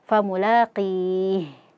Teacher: Dan jangan lupa ha ini dia punya yang namanya sifat rakhwah, yaitu mengalirnya suara. Jadi dialirkan suaranya ketika mengucapkan huruf ha.